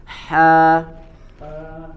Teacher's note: makhrajnya ada di wasatul halqi ada di tengah tenggorokan